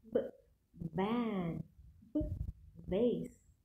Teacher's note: Touch the lower lip to the upper teeth.